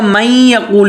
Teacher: یا آ رہا ہے، تو اب یہ من یقول ہوگا، پڑھا جائے گا من یقول، یہ نون یا میں مدغم ہو جائے گا لیکن نون کا اثر باقی رہے گا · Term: ادغام ناقص